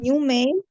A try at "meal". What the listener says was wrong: Male is this. This is male, which is البريد. Male. Or male معناها ذكر. So if you want to say male, you mean something else. So this is what meal.